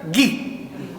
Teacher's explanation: Existe la oclusiva velar sonora G